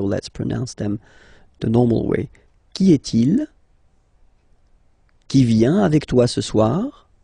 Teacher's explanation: you will have to raise your voice a little bit at the end of the question